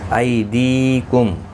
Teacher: ای یا لین ہے، دی یا مدہ ہے. یا مدہ کو ایک الف کی مقدار کے برابر کھینچ کر پڑھنا ہے. ای کو تھوڑا نرمی کے ساتھ کھینچ کر ادا کریں گے.